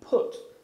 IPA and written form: pʊt (put)